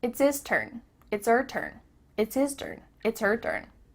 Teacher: The H at the beginning of his and her is cut off.